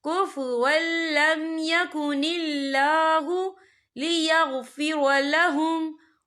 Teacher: یہاں اللہ کا نام باریک پڑھا جائے گا کیونکہ اللہ کے نام سے پہلے زیر ہے۔